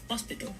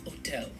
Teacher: we're going to be dropping the h sound